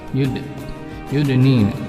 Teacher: Jadi qalqalah pantulannya kecil tapi tetap terdengar. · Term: qalqalah sugro